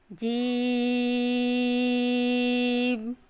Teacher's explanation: جیم کی آواز ناک میں نہیں جانی چاہیے، اس کے لیے ہم نے اپنے دانتوں کو تھوڑا سا کھول کر پڑھنا ہے۔ اگر ہم اپنے منہ کو بند کر کر پڑھیں گے تو آواز ناک میں جائے گی، اس لیے تھوڑا سا کھول کر پڑھنا ہے۔